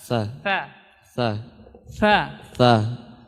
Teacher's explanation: Jadi huruf tha makhrajnya, tempat keluarnya yaitu ujung lidah, ya ujung kita bertemukan dengan ujung gigi seri atas.